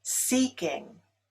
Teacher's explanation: Seeking is stressed on the first syllable